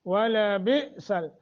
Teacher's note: ولبئس حمزہ ساکن ہے جھٹکا دے کے پڑھیں گے